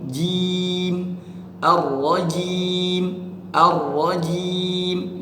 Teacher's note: maka harus disempurnakan vokal i-nya ya, harus disempurnakan. Jangan kita seret ke huruf e, jangan jim, jim, tapi jim, ar-rajim, ar-rajim.